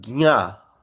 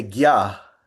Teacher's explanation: in the south they will say uh uh gya and the north they'll say ga